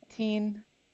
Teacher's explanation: is a T and then high tone double E